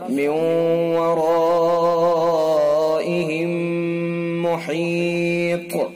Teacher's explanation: ادغام میم ساکن، اس کو ادغام مثلین بھی کہتے ہیں، یعنی ڈبل میم. میم ساکن کے بعد دوسرا میم، تو اس کے اندر ادغام میم ساکن ہوگا، اس کے اندر بھی غنہ ہوتا ہے · طا کو ساکن کر دیا تو طا کے اندر قلقلہ ہوگا، اور طا کو پر بھی پڑھا جائے گا چونکہ حروف مستعلیہ میں سے ہے طا.